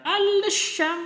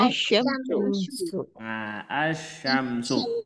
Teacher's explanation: dimasukkan kepada huruf selanjutnya sehingga lamnya tidak terbaca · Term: idgam Syamsiah